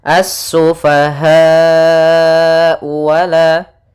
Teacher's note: Mad wajib muttasil itu kita panjangkan sepanjang 4 harokat.